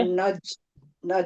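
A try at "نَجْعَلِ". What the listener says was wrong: नहीं, फिर वही हो रहा है ना, प्रैक्टिस ऐसे ऐसे नहीं आएगा, ये प्रैक्टिस करना पड़ेगी आपको, ताकि ये एर है ना इसमें, एर एर नहीं आना चाहिए। पहले क्या करेंगी, दो स्टेप है इसमें, कलकला में दो स्टेप होते हैं।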